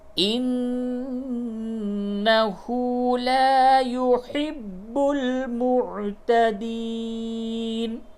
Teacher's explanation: نون کے اوپر تشدید ہے، غنہ ہوگا